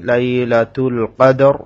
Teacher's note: এখানে দাল কলকলা র মোটা করে পড়তে হবে